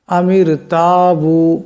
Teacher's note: রা সাকিন তার ডানে মিম আসছে মিমের নিচে জের গতি এই র আওয়াজটাকেও পাতলা আওয়াজে পড়তে হবে